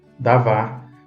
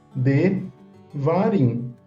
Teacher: a palavra ficou maior foi alongada veja o que que acontece aquele a se torna um e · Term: redução